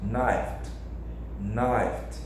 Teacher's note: Percebe que agora o som é de um T bem suave, quase sibilante.